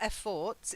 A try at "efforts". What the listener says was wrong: Efforts. Efforts. Effort, effort, Effort. stress is different. Effort. Fort. Effort. Effort.